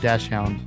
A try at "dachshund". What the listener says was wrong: Just not to mess with you there, but I'm pretty sure it's a dachshund, not dash.